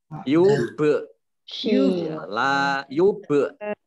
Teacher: Kolkolah itu caknya di tekluk gitu ya. Orang Jawa bilang nyekluk, dipantulkan ya. Ya, huruf kolkolah itu antara lain ba, dal, ko, ya, jim, ya itu ya.